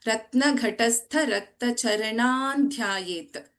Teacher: Na will come in the place of Anuswara here because the consonant here is Dha. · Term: Anuswara Parasavarna